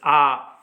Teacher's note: विवृत स्वर जिसमें खुला रहता है अपना जो मुंह है, मुख पूरा तरह से खुला रहता है विवृत स्वर, जैसे आ पूरा खुल गया।